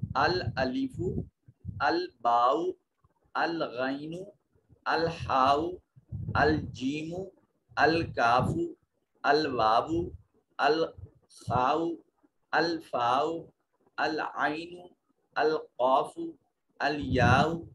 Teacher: یہ وہ حروف ہیں جن پر جب الف لام آئے گا تو وہ لام پڑھا جائے گا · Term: لام قمریہ